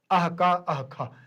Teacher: उच्चारण करेंगे तो आधे विसर्ग का उच्चारण करेंगे, पूरे का नहीं। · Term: जिह्वा मूल्य अर्ध विसर्ग